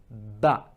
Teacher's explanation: The ba is coming from the outermost part of the lips. Ba. Just like in English, B.